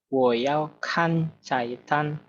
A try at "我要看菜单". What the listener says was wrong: Oke, 很好.